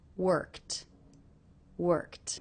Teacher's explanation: that the IDI ending here is pronounced as a tea sound that's because the sound before the K is unvoiced so this ending will also be unvoiced